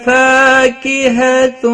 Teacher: فا الف مدہ ہے، ایک الف کے برابر کھینچ کر پڑھیں گے۔